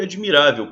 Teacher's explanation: o l tem som de u